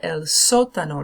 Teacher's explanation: notice the stress is on the first syllable